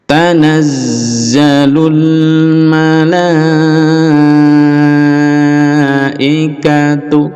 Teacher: lamnya panjang, mad wajib muttasil, bisa sampai 6 harokat. Tanazzalu, nah ini za ada tasdid, didouble lalu dipanjangkan.